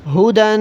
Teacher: کیونکہ تنوین ہے اس لیے غنہ کر رہا ہوں